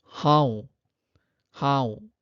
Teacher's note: There is nasalization, anuswara, after ha.